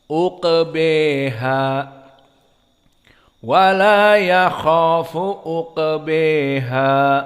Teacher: berkesendirian Imam Al-Kisai membaca dengan Al-Imalah Al-Kubra